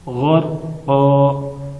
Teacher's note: ہم یہاں وقف کر رہے ہیں تو دو زبر کی جگہ ایک زبر پڑھیں گے